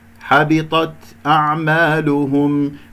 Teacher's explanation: الآخرة حبطت أعمالهم، في الوقف والوصل التاء من كلمة حبطت تكون مهموسة، ولا أقلقل، حبطت أعمالهم خطأ، أو أبالغ في الهمس، حبطت أعمالهم هكذا أيضا خطأ، حبطت أعمالهم هكذا.